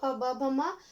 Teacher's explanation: दो होठ है हमारे, वो होठों के माध्यम से वो ये आवाज बाहर निकलती है। तो ये सभी स्पर्श व्यंजन के उदाहरण हैं।